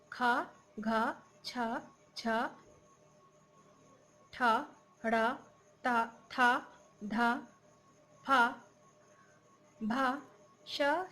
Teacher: इसमें उच्चारण में हाकार जैसी ध्वनि विशेष रूप से होती है। प्रत्येक वर्ग के दूसरे, चौथे तथा ऊष्म वर्ण महाप्राण व्यंजन होते हैं।